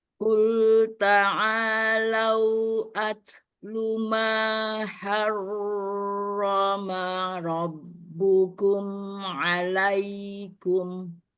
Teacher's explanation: H-nya udah bagus. Tipisnya. Ro-nya udah bagus tebalnya. Tapi kalau tasdid nggak boleh ditahan.